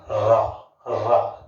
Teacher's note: जीभ का अग्रभाग वायु के वेग के कारण कांपने लगता है, क्या कहा गया है, जिन ध्वनियों के उच्चारण में जीभ का अग्रभाग, जीभ का ये वाला भाग वायु के वेग के कारण कांपने लगता है, तो उसे हम क्या कहते हैं, उसे हम प्रकंपित व्यंजन कहते हैं।